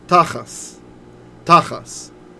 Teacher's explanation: in Ashkenaz, in the German Jewish pronunciation, when you see the tav without a dot, that's an S sound. It's S. But this isn't how we read it usually when we read. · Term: Ashkenaz pronunciation